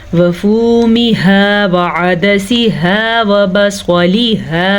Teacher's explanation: یہ 2 آنکھوں والی ہا ہے. یہ حلق کے آخری حصے یعنی کہ سینے سے نکلتی ہے. اگر اس کو آپ پڑھیں گے وفومها کریں گے تو یہ ہا بن جائے گی، جبکہ یہ ہے ہا.